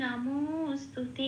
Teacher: যেমন আমরা বলি নমো স্তুতে, এই নমো বলে যে টানটা দিই এটা অবগ্রহের কাজ। একটা শব্দকে একটু জোর দিয়ে এমফাসিস করে বলা হয়, তো এখানে এই তয়করটাকেই একটু জোর দিয়ে বলা হচ্ছে, এটাই অবগ্রহের কাজ।